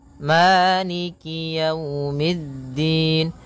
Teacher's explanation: kasrahnya juga disempurnakan jangan sampai dibaca dengan E tapi dia I